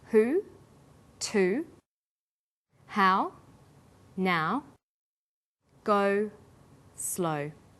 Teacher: hi back vowels are ooh ow and oh sounds that are produced with the highest part of the tongue but close to the back of the mouth